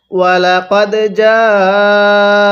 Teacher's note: স্মরণ রাখবেন এই জিমের মধ্যে আমরা 4 আলিফ টান দিব। কারণ আমি পূর্বে পর্বের মধ্যে বলছিলাম মদের হরফের উপর এরকম মোটা চিহ্ন এরপরে গোল হামজা থাকলে সেখানে 4 আলিফ টানতে হয়।